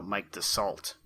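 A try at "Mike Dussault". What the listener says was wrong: Yeah, but I don't think you pronounce the T. Alright, so Mike DeSaul...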